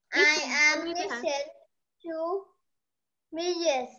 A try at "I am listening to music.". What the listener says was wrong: Sao lại listen? Đây là listening mà. I am listening to music.